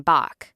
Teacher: corresponds to the voiceless velar fricative ḫ, similar to the ch in German Bach